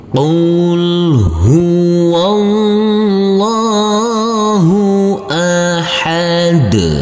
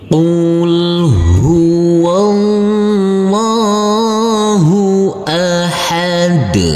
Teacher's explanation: Jangan lupa huruf lam kita tekan dan kita tahan dengan 2 harokat.